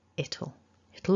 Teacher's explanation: we're losing the w and our vowel is softening to a schwa okay it'll it'll all make sense eventually so i hope you